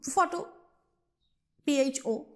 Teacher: in case of the word photo, we are stressing on the first syllable